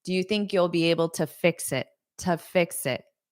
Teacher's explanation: because this is a preposition and there's a next word, it's going to be unstressed to.